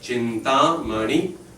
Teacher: So actually two long, one short, and then one long.